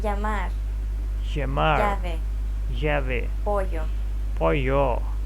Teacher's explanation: It sounds like a combination of an L and a Y sound.